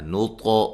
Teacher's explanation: طا کو موٹا بھی کریں گے، ہلا کے بھی پڑھیں گے